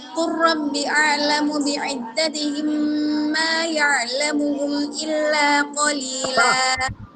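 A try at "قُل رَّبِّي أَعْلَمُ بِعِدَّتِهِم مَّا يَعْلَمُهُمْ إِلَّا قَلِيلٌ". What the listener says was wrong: Robbinya panjangin 2 harakat. Bukan 2 harakat dia, bisa 2, bisa 4, bisa 6 harakat.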